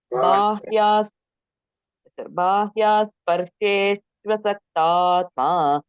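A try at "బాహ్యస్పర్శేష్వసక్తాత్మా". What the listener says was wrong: ఇక్కడ బాహ్య దీర్ఘం లేదు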